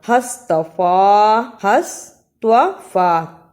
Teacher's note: توا کی جگہ پہ تے کی آواز نہیں آنی چاہیے